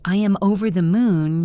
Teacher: When you say I am over the moon, you should smile. Your voice should go up.